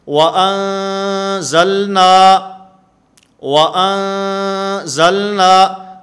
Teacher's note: یہاں پر آواز ناک کے اندر لے جا کر غنہ کے ساتھ ہم اس کو ادا کریں گے